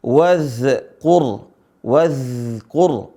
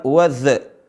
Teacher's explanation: Huruf za dibaca dengan mengalir, bukan qalqalah atau bukan jahar. Ya, tapi rakhawah. Wadhkur, wadhkur, bukan wadh.